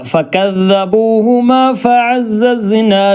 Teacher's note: നാവിൻ്റെ തലഭാഗവും പിന്നെ മേലേ മുൻപല്ലിൻ്റെ താഴ്ഭാഗവും കൂടി കൂട്ടിമുട്ടുന്ന ഒരു രൂപമാണ്